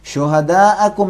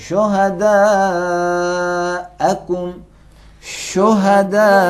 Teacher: 6 حرکت تک کھینچیں گے، یعنی 4 حرکت سے نیچے نہیں کھینچنا ہے. شہداءکم نہیں پڑھیں گے، شہداءکم، شہداء، یعنی 4 انگلیوں کے جمع ہونے تک.